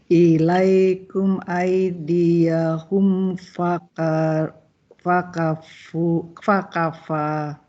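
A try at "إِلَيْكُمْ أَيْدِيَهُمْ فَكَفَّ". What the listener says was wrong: kaf Pak bertasydidnya jangan dicepatkan seperti yang lain. Fa seperti itu. Ulangi.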